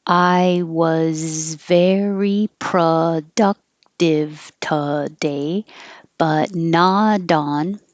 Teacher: The T on not changes to a D when it connects